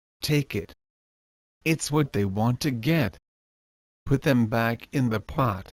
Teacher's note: the T sound is almost silent but not exactly silent for this the tip of your tongue needs to tou on